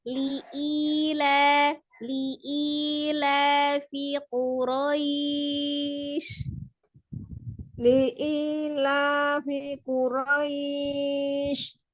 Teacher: Jangan Li'ilafi dipanjangkan. Li-nya satu. Li-nya jangan dipanjangkan. I-nya yang 2 harakat.